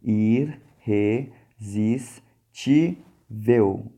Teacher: A sílaba tônica está na penúltima sílaba.